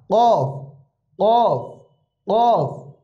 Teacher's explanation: কফ কাফ, অনেকেই দুইটাকেই কাফ বলেন, এজন্য আমরা একটু খেয়াল করব। কফ কফ একটু মোটা, কফ কফ কফ, গলার ভিতরে একটু বাড়ি খাবে।